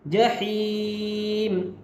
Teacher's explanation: ہا کو حلق سے نکالیں گے